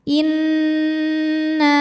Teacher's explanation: Cara membacanya didengungkan. Tahan bunyi N sampai ada suara masuk hidung, kurang lebih 2 harokat. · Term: gunnah musyaddadah